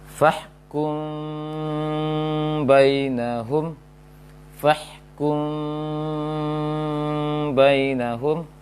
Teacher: Dia mim, baca mim, tapi ada furjah, celah kecil saja, renggang kecil antara mim, antara dua bibir.